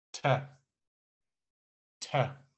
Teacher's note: And again, there is a high tone above the E